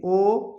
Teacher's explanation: यानी अगर आप किसी स्वर को बोलते हो तो बोलते समय आपके होठ क्या होते हैं? गोल हो जाते हैं, थोड़ा सा गोलानुमा हो जाता है, तो उसे गोलीय या फिर उसी को हम कहते हैं वृत्तमुखी। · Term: वृत्तमुखी स्वर